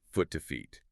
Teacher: And the hack here, which I thought was kind of neat, is to imagine the vowel sound sort of pulling upwards in your mouth. Like from the oo sound in foot, which is lower, to the higher e sound in feet